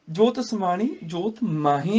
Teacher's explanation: ਇੱਥੇ ਨਾਸਕੀ ਉਚਾਰਨ ਮਾਹੀ ਦਾ ਹੈ, ਤੇ ਇੱਥੇ ਹਲਕਾ ਜਿਹਾ ਰੁਕਣਾ ਹੈਗਾ, ਪੌਜ਼।